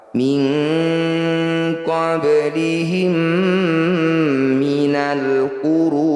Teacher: Mim sukun bertemu mim disebut bacaan idgham mimi atau idgham mithli. Bunyi mim pertama masukkan pada mim kedua, dengungkan 2 harokat.